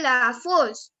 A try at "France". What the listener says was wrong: Okay, ये force नहीं है. It's not a force. It's France. जैसे हम बोलते हैं ना फ्रॉक, फ्रॉक, तो फ्रांस. ठीक है, FR, फ्रांस.